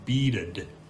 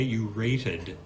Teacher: the ED at the end of the verb, yes, is pronounced schwa plus d